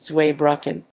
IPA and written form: ˈtsvaɪˌbʁʏkn̩ (Zweibrücken)